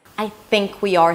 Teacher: 'think' is stressed, it's a little longer, 'I' is a bit more reduced